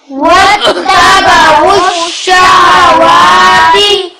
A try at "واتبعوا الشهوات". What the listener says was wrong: عین کی آواز درست آئے جی واتبعوا الشہوات